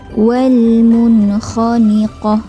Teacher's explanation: nun mati adalah perlu dijelaskan ketika bertemu dengan huruf kha izhar halqi